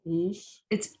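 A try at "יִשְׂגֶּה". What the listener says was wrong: it's a sin, it's an S, not an SH. The dot is on the left, so it's an S.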